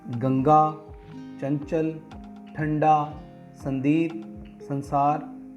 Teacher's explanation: अनुस्वार ध्वनि का उच्चारण के समय जो ध्वनि है वो नासिका विवर से बाहर निकलती है